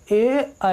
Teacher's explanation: कंठ और तालु मिला के ए और आई बोला जाता है